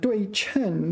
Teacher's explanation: this is one of the cases where this is pronounced chen, fourth tone